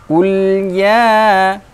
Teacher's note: lam sukun, sifat tawassut, pertengahan antara syiddah dan rakhawah